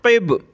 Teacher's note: قاف کو موٹا کریں گے، اور با پہ ہم نے قلقلہ کرنا ہے